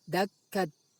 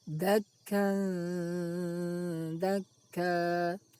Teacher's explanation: bunyi tanwin dibaca samar, tidak dibaca izhar. Dakkan juga tidak diidghamkan ke huruf dal. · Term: ikhfa